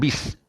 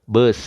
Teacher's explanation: Bismillah ni tuan-tuan, macam biasa bila baca bismillah kena baca dengan bis, B-I-S. Vokal baris bawah adalah vokal I. Tak boleh dengan vokal E.